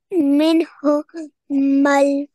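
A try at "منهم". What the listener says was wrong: Yes, minhu mal. Good job.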